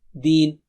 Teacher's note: آپ دین 2 حرکت سے، یا 4 یا 6، ہم 2 سے رکے ہیں